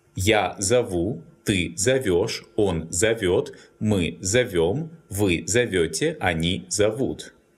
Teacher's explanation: In all forms, the stress falls on the endings.